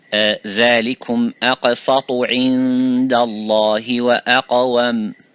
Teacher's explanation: this is the qaf, is a heavy or full mouth. Similarly the ta.